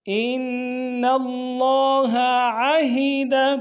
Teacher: ان میں نون مشدد ہے، غنہ کریں گے، ان اللہ عہد۔